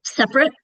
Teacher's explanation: It's spelled separate, but because we say the word quick quickly, we reduce that middle syllable